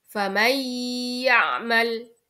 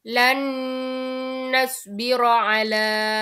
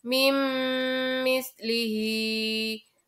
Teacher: Dan cara membacanya bagaimana? Cara membacanya adalah memasukkan dengan mendengung. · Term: idgham bi gunnah